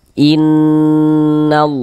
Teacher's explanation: kita gunahkannya kita dengungkan. Jadi bagian innya itu suaranya itu kita tahannya kita panjangkan sejenak. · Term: ghunah musyaddadah